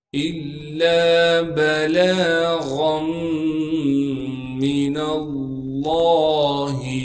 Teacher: تشدید ہونے کی وجہ سے لام پر تھوڑا سا ٹھہراؤ کریں گے۔ لام کے بعد الف مدہ ہونے کی وجہ سے لام کو ایک الف کی مقدار کھینچیں گے۔ با کو بغیر کھینچے پڑھنا ہے۔ · الا بلاغا من اللہ، حمزہ کو لام سے ملائیں گے اس لیے کہ لام پر تشدید ہے۔ تشدید ہونے کی وجہ سے لام پر تھوڑا سا ٹھہراؤ کریں گے۔ لام کے بعد الف مدہ ہونے کی وجہ سے لام کو ایک الف کی مقدار کھینچیں گے۔